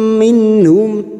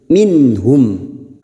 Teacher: nun sukun bertemu ha idhar halki, nun sukun dibaca jelas tanpa mendengung. Nun sukun atau tanwin yang bertemu dengan 6 huruf ini hamzah, ha, ha, kha, ain, ghain, maka nun sukun dibaca jelas tanpa mendengung.